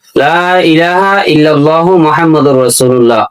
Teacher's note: যদি বলেন লা ইলাহা, লা এটা 3 আলিফ টানা, এটা টানতে হবে কমপক্ষে 1 আলিফ টানা ফরজ। লা কমপক্ষে 1 আলিফ টানা ফরজ